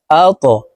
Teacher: ত কলকলার হরফ উপরের দিকে ধাবিত করে ধাক্কা দিয়ে উচ্চারণ করব